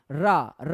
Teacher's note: व्यंजन जिनको बोलने में हमारी जिव्या क्या होती है पीछे की तरफ मुड़ जाती है लुंठित हो जाती है ऐसे करके रा रा बोलोगे तो आपकी जुबान क्या होगी पीछे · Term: लुंठित व्यंजन